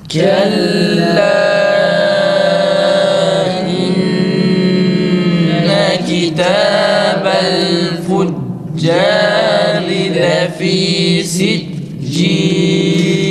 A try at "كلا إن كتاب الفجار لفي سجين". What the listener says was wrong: Lefi fa'nın sesi iyi çıksın arkadaşlar tekrar. İnneye dikkat edin uzatılmasın.